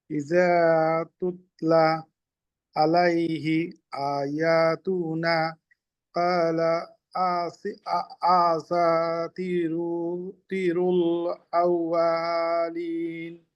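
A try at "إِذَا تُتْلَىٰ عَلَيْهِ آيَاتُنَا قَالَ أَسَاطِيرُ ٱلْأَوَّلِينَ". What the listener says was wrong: এই যে আউয়ালিন ছাড়া বাকি সবগুলো শব্দ কিন্তু খুব চমৎকার লাগলো আমার কাছে, কিন্তু একটু আগে যখন পড়লেন তখন কিন্তু মারাত্মক ভুল যাচ্ছিল। এক আলিফটা বাড়তি চলে যাচ্ছে, হরকত টান হচ্ছে, আউয়ালিন, এখন খালি ওয়াওটা বা ছাড়া বাকিগুলো।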